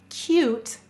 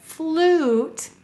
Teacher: but in a word like flute you hear o not u in some words the long sound of U drops the Y · Oo is a second long sound. So notice in a word like cute, you hear u, k, ute. But in a word like flute, you hear oo, not u.